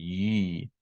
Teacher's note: the tongue is further back, so it's not post-alveolar like a j, and it's also further away from the top of the mouth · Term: palatal sound